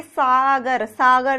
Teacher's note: सागर जब हम बोल रहे हैं तो हमारी जीवा कहाँ टकरा रही है, कहाँ स्पर्श कर रही है, नीचे वाले जो दांत हैं उनमें स्पर्श कर रही है। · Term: दंतव्य